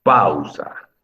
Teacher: cuando tú pronuncias pausa, en realidad la sílaba que pronuncias más fuerte es la A. Por eso se le llama vocal fuerte.